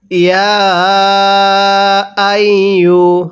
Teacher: এই ইয়া এর মধ্যে আমরা 3 আলিফ টান দিব, কারণ ইয়া খারা জবর ইয়া।